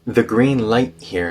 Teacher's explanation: the T in light turns into a glottal stop